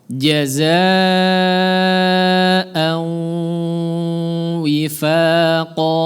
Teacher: Ghunnah makhrajnya adalah di khayshum. Jangan au mulutnya saja yang terlibat, la. Libatkan hidungnya juga. Jangan au hidungnya enggak berpengaruh, enggak berperan. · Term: idgham bi ghunnah